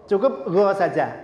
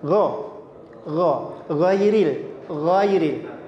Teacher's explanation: Go niku tenggorokan paling atas. Berhimpitan dengan kho. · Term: huruf ghain